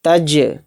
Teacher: تج، اب جیم کے اوپر جزم آ گیا تو جیم حروف قلقلہ کے 5 حروف میں سے ایک حرف ہے، تو اس لیے اس میں قلقلہ ہو رہا ہے